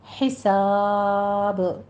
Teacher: حساب میں ہا وسط حلق سے ادا کریں گے